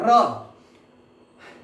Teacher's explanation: जब आप र को बोलते हैं तो जीभ में कंपन होता है, इसीलिए उसे प्रकंपित कहते हैं, इसीलिए उसे कंपन जात वर्ण कहते हैं।